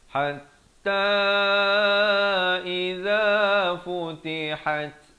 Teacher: bukan ha simpul tapi habdas di pertengahan kerongkong